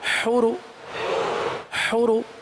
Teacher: ہا درمیان حلق سے ہے، پھر پیش میں ہونٹ گول ہوتے ہیں